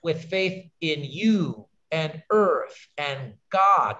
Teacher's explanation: We're not going to stress in and, we stress you, earth, God.